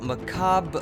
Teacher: So, the word is basically pronounced macabre upside down uppercase R in French, where upside down uppercase R is a voiced uvular fricative. The closest sound in English is, of course, upside down lowercase backwards R, and note that there's a flat upside down uppercase R sequence at the end of the word.